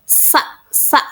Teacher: Pada huruf sin ini tidak bersuara. Nah, udara itu mengalir di sela lidah, di sela-sela lidah dan gigi